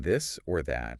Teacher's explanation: for the voiced th you also engage your vocal cords so you can feel it you can feel the vibration if you put your fingers on your throat now another good